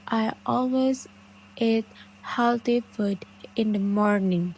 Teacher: kata-kata yang biasanya ditekan adalah always, eat healthy food, dan morning